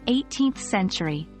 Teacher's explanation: for centuries we typically stress the first part of the number